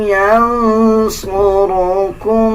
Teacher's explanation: را کو پر یعنی موٹا پڑھا جائے گا. جب را کے اوپر زبر آ جائے یا پیش آ جائے تب ہم را کو پر یعنی موٹا پڑھتے ہیں.